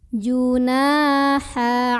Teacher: huruf nun yang barisnya fathah kita panjangkan sepanjang 2 harokat. Alifnya berfungsi sebagai pemanjang huruf nun. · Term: mad tabi'i